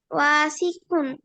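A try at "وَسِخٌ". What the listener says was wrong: ওয়াতে টান নাই,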